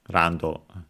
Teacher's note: because of course Japanese doesn't have the sound L, and so it becomes the closest one, which is R.